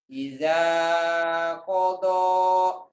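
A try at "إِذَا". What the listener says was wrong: Jangan ija, idza. Jangan ija ya, idza.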